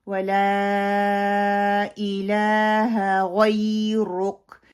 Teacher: غین جو ہے وہ موٹے حروف میں سے ہے، اس کو موٹا پڑھا جائے گا. اور را بھی یہاں پہ موٹی پڑھی جائے گی.